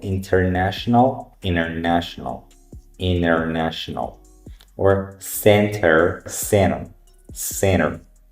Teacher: silent t drops completely when uh after n